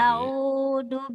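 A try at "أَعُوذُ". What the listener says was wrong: A'udhu. jangan a'udhu. Alif dan ain. A'udhu. A'udzu billahi minasyaitonir rajim. Ainnya agak-agak kayak keselak.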